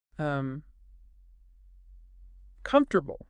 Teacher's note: The O just disappears. >> The O is elided and vanishes. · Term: elision